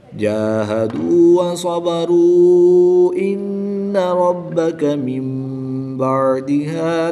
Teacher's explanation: نون ساکن کے بعد حرف با ہے تو یہاں پر اقلاب ہوگا، نون ساکن کو میم سے بدل کر غنہ زمانی کر کے پڑھیں گے